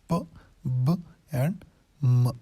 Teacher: دونوں لپس ہی ان ساؤنڈز میں انوالو ہوتے ہیں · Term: bilabial